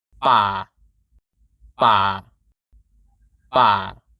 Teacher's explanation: ไม่เอก is low, steady pitch, ป่า ป่า ป่า To make the low tone, lower your jaw to drop the pitch.